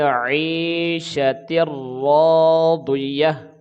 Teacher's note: را کے بعد الف ہے تو یہ الف مدہ ہے، ایک الف کے برابر کھینچے گے